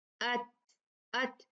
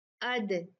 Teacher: تا میں ہوا نکلتی ہے، دال میں ہوا نہیں نکلتی